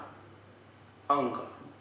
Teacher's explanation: अंग बोलने पे ऐसा लगता है कि मुंह से बिल्कुल हवा नहीं निकल रही है या बहुत ही कम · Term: अल्प प्राण